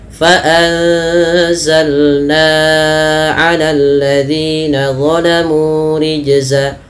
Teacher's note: antara zi dengan na beda. Na-nya lebih panjang dibandingkan zi-nya. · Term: satu panjang satu pendek